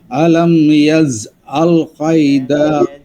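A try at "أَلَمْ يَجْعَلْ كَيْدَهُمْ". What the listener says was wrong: জিমটা শক্ত করেন আরো। না, কায়দাতে কায়দাতে টানা হবে না, কালকে বলছিলাম মনে আছে কি না, কাইদাহুম।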